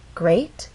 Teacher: Great has one syllable, so we only have one syllable to make our voice glide up. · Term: rising intonation